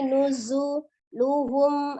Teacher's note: tampakkan sifat as-safir di huruf zai, nuzuluhum, ada mim sukun bertemu dengan huruf ya, dibaca dengan izhar, jelas ya, izhar safawi.